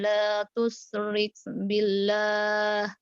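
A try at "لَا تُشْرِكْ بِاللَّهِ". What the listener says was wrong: La tusyrik bila shin.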